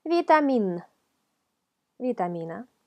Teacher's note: un sonido que se forma con ayuda de los dientes superiores con el labio inferior un golpecito de vitamina vitamina si segunda línea es la letra